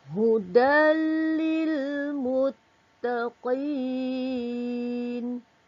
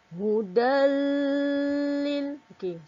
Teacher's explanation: kita masukkan sebutan tanwin ke dalam huruf lam tanpa dengung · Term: idgham bilagunnah